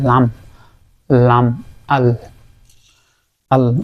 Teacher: উপরের দাঁতের মাড়ি এবং তালুর কিছু অংশ নিয়ে লামটা উচ্চারণ হবে